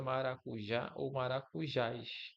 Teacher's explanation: A última sílaba, ou a sílaba forte é a última, é o já, só que ele pode ser seguido de S ou não, que é o que ele explica aqui, tá?